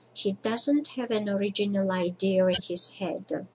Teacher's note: Speakers of British English often add an intrusive sound between idea and in.